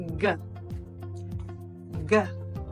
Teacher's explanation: sound the hard sound of the letter G is g g the sound is created at the back of your mouth and the back of your tongue